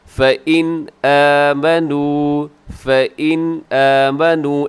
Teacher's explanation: नून साकिन के बाद जब हमज़ा आता है तो नून साकिन पे गुन्ना नहीं करते बल्कि ज़ाहिर करके पढ़ते हैं। फ़इन आमनू, फ़इन आमनू, ऐसे आपने इसको तेज़ी से पढ़ देना है।